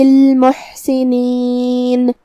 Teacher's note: کلمت المحسنین میں یہاں حرف الحاء کو ہم حلق کے درمیان والے حصے سے پڑھیں گے، جو کہ اس پہ جزم ہے، لہذا ہمیں حاء کو ظاہر کرنا ہے.